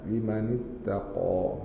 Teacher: Qaf tebalkan pakai lidah angkat